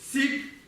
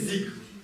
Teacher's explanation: низкотонная «са» на востоке Тибета произносится как? «За». То есть, если мы говорим через «сик», они будут произносить через «зик».